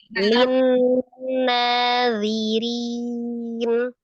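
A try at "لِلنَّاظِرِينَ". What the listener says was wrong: Nazirin bukan nadirin nadirin ya Allah Baik saja.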